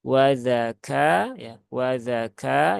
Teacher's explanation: Kaf ada hamesnya jangan ditinggal